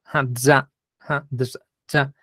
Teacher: la Z se hacía como D y una S zumbando